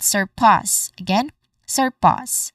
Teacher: It has a short a sound and then it ends with a hissing sound. So the word it starts with a hissing sound and ends with a hissing sound. · Again, pass, which is our stressed syllable here. It has a short A sound, and then it ends with a hissing sound.